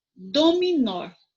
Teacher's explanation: então nó é a última sílaba mais forte a sílaba tônica